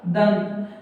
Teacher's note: अनुस्वार में वायु नाक से अधिक मुख से कम निकलती है